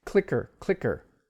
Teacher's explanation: the first k sound has aspirations the second does not as the second one is a soft clicker so you've got